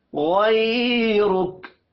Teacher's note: غین کو موٹا پڑھیں گے، یا لین ہے، رک، را کو بھی موٹا پڑھیں گے پیش کی وجہ سے۔